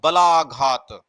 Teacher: बा पे और ला के ऊपर ज्यादा हमने फोकस किया, शब्द पर ज्यादा फोकस किया।